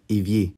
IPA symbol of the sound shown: e